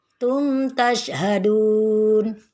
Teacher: Jadi tidak ada yang dengung mim sukun dengan ta.